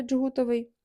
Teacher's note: коли д і ж є в корені вони позначають один звук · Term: африкат Дж